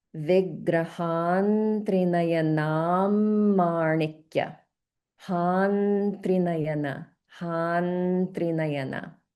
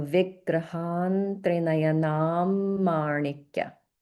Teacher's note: you can hear the holding that I'm applying on the Anuswara because it's followed by another consonant